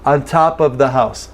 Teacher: we often reduce of to uh